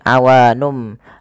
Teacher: Nun diganti dengan mim karena dia bacaan iqlab yaitu nunnya bertemu dengan huruf ba awalnya awanun menjadi awanum maka di sini m itu dianggap mati